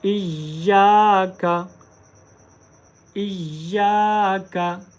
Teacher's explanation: तो यहाँ पर हम या को एक अलिफ की मिकदार लंबा करेंगे। इय्याका, इय्याका नअबुदु, नअबुदु, इय्याका नअबुदु, इय्याका नअबुदु व इय्याका, व इय्याका, व इय्याका नस्तईन, नस्तईन, नस्तईन व इय्याका नस्तईन।